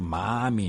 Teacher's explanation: fan un allargament i obertura de les vocals